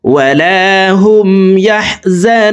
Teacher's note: নু এখানে 3 আলিফ টেনে নুনকে সাকিন করে ফেলবো, কারণ পেশের বাম পাশে জাজমুল ওয়াও মদের হরফ। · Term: মদ্দা আরজি